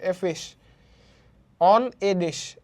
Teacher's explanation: অন কিন্তু স্ট্রেস না, এও স্ট্রেস না, ডিশ এটা উচ্চারণ বেশি হচ্ছে, পিচ বেশি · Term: স্ট্রেস সিলেবালস